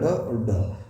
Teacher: जीभ पहले ऊपर उठकर मूर्धा को स्पर्श करेगी और फिर नीचे आएगी। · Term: उक्षिप्त और द्विगुण व्यंजन